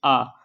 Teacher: जीभ हिल ही नहीं रही यानी कि ये मध्य से आ रहा जब दोस्तों हमारी आवाज कोई मध्य से निकलेगी जीभ के तो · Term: मध्य स्वर